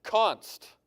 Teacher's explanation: Const starts with a plosive. Back of your mouth, back of your tongue, hits the top of your throat, right? And then where's the air go?